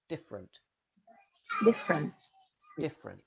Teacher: in different, the first E almost always disappears, so you link directly from F to R.